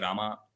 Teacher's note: in the South India people you know make it elongated right they say Rama